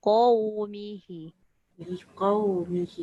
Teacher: pastikan kita punya pangkal lidah terangkat baru dia jadi qa. Dia bukan ka. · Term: qaf